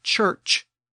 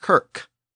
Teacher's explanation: shift those CH sounds at the beginning and the end of the word back to their original K sound, you get kirk.